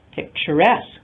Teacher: the stress falls on the suffix itself